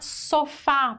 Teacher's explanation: da sílaba mais forte última sílaba é uma dissílaba e também é uma palavra oxítona porque a última sílaba é a mais forte